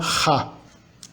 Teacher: E o H é um pouco mais forte, é a fricativa velar ha, similar às línguas eslavas.